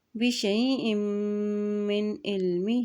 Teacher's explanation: حمزہ کے دو زیر کو میم کے ساتھ ملاتے ہوئے پڑھیں گے کیونکہ میم کے اوپر شد ہے، اور جب بھی میم کے اوپر شد آتی ہے تو وہاں پر غنہ بھی ادا کیا جاتا ہے، ٹھیک ہے۔ بشیء من علمہ، یہاں ہا کے نیچے کھڑی زیر بھی ہے، اوپر مد بھی ہے، اس لیے اس کو لمبا ادا کریں گے۔